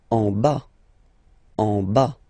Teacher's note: Final S not pronounced.